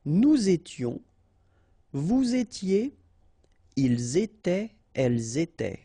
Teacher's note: final S not pronounced, and then you make the liaison